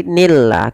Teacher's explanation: lafal Allah di sini dibaca dengan lam tarqiq